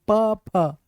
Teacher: अगर मैं प बोलूंगा तो जीभ नहीं होठ टकराएंगे। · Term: स्पर्श व्यंजन